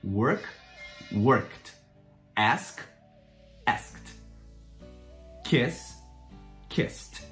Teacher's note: E, por um acaso, terminou com um som não vocalizado, um som que a gente não vibra as cordas vocais, coloca um som de T